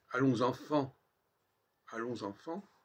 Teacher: il y a déjà 3 nasales en 2 mots. Le on de allons, le en d'enfant et le en d'enfant.